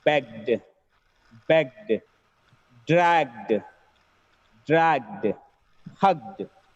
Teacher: If the word ends with g sound, it gets d sound at the end.